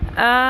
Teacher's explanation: حمزہ کھڑی زبر مد لام. اب یہاں پہ ہم مد کو 5 الف کے برابر لمبا بھی کھینچیں گے اور لام کے ساتھ ہم نے جوڑنا بھی ہے